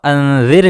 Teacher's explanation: انذر میں را کو باریک پڑھیں گے، را سے پہلے زیر ہے